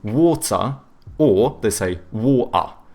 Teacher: Whereas like the British, they tend to have either hard T's or they do like the glottal T, so but then they do a schwa instead of pronouncing the R